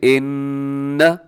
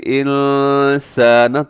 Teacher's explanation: آپ اگر اس کی تھوڑی سی پریکٹس کریں اور اس طرح بولیں ان، تو آپ کی زبان تالو کے ساتھ لگ جائے گی. لیکن اگر آپ اس کو ایسے بولیں انسان تو زبان تالو سے نہیں لگتی بلکہ تالو سے تھوڑا سا نیچے رہتی ہے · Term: اخفا